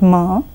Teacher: per and B and blow out air but the difference is the air goes out from your nose to get this sound rather than from your mouths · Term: nasal sounds